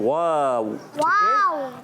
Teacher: वाव की अदायगी होती है होंठों की, दोनों होंठों की गोलाई से। दोनों होंठ यूज होते हैं।